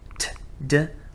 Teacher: When you take a word ending and you begin that word ending with an ambiguous sound, something between, for instance, a T and a D. The sound T and D, t, d, are very similar. The only difference between them is voice onset time. When does the voice from our labial folds, from our vocal folds, when does our voice begin in t or d?